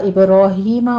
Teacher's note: وَأَوْحَيْنَا إِلَىٰ إِبْرَاهِيمَ وَإِسْمَاعِيلَ وَإِسْحَاقَ، جہاں جہاں فتح قائمہ ہے 2 کاؤنٹ کرتے جائیے۔ ابراہیم میں با کے اوپر قلقلہ کریں گے، ہی میں یا مدہ، اسماعیل کی عین کے بعد دیکھیے یا مدہ، یہاں بھی آگے وَإِسْحَاقَ سین کی سیٹی کی آواز کے ساتھ ہمس کے پڑھیں گے اور آگے قاف کو پر پڑھنا ہے۔